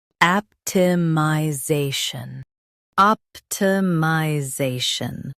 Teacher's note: Stress the za syllable and keep shun light.